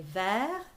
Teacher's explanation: Oh, mon regard languissant. Vers, and don't pronounce the S. You just say vers with the R.